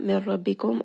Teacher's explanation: Min rabbikum, also idgham. However, this is going to be without ghunna, meaning that noon is merged completely within the ra